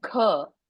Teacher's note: A Mahaprana, you have to give extra air.